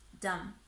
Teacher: pay attention to the final B in dumb, which is unvoiced, yeah? So don't pronounce that B sound. Don't say dumb, B, dumb, but dumb, yeah?